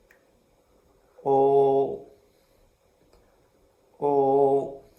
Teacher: When you pronounce the O sound, please make sure your lips are totally rounded and the tongue position is slightly to the back.